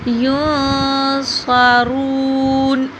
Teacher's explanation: را کو پر موٹا کر کے پڑھا جائے گا اور تھوڑا سا لمبا کریں گے کیونکہ پیش کے بعد واو آ رہا۔ وَإِذْ نَجَّيْنَاكُمْ مِنْ آلِ